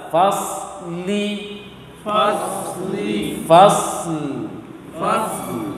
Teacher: Fasl. Jadi shad langsung pindah ke lam.